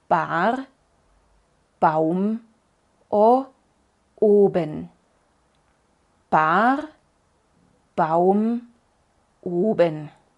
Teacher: para decir la B cerramos los labios hacemos algo de presión y los abrimos con una pequeña explosión de aire